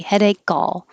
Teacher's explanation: You'll hear the K release and make the A.